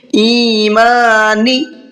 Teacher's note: نون کو نہیں کھینچنا ہے بلکہ ایمانی جلدی پڑھنا ہے نون کو